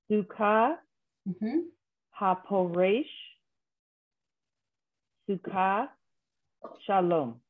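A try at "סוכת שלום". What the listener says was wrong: So the middle word has a t at the end. Sukkot Shalom.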